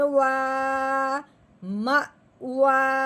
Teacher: واؤ کے اوپر کھڑی زبر ہے، اس کو ہم نے ایک الف کے برابر لمبا کرنا ہے